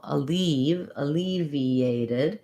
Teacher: it's unstressed because my main stress is on leave and so this is just like the word leave where it has the tense e vowel even though it kind of looks like ev in this word